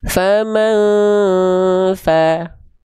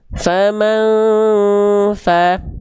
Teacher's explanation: Dibaca dengan menyamarkan bunyi an atau konsonan an disertai dengung selama 2 harokat. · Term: ikhfa hakiki